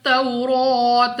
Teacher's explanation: ता पर खड़ा जबर 2 सेकंड तक लंबा करना है।